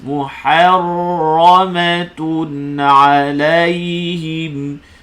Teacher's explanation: Sini tanwin bertemu ain. Izhar halqi. Ha tu nipis.